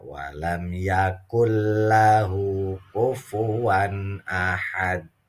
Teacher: dibacanya dihentikan apa diwakafkan maka hukumnya adalah qolqolah kubro